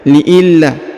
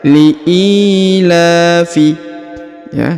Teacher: kemudian huruf la-nya dipanjangkan 2 harokat ya